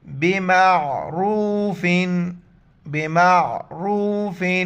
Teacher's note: فامساکن بمعروف، میم کو عین کے ساتھ ملائیں گے اور عین کو گلے سے ادا کریں گے، را پر پیش ہیں تو را کو موٹا کر کے واو کے ساتھ ملائیں گے